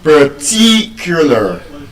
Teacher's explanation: the way I pronounce the word, I'm stressing what syllable? The second syllable, ti.